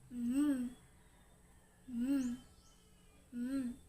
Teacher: dahil sa pagbaba ng velum o malambot na ngala-ngala ay hindi sa bibig kundi sa ilong lumalabas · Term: pailong